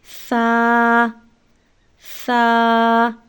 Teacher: سا پڑھتے ہوئے سیٹی کی آواز ہرگز نہیں نکلنی چاہیے۔